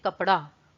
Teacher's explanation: जब कहते हैं कपड़ा, ड़ के लिए आप झटके से जीभ को नीचे लाते हैं। तो जो झटके से जो नीचे लाते हैं ये आपके उत्क्षिप्त व्यंजन होते हैं।